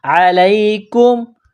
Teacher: کاف کو میم کے ساتھ، کاف کو باریک کرنا ہے